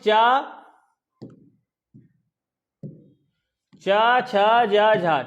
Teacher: स्पर्श होने के साथ साथ, स्पर्श के साथ साथ घर्षण होता है, उसे हम क्या कहते हैं, स्पर्श संघर्षी व्यंजन।